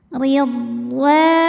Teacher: Huruf dhad punya sifat yang khas yang disebut dengan istitalah, yang artinya makhrajnya memanjang.